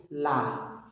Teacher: पार्श्व इसलिए बोलते क्योंकि जीभ के दोनों ओर से हवा निकलती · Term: पार्श्विक